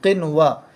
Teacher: حرف مدہ کو ایک الف کے برابر کھینچ کر پڑھتے ہیں